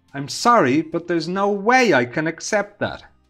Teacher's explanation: Here the stress is on no way